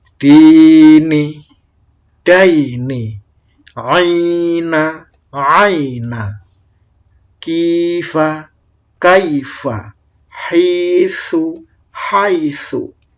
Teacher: Jadi kita ajarkan harokat A, bunyi A bertemu ya mati menjadi ai.